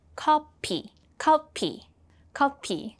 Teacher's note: Korean doesn't have an F, so it's replaced with a P sound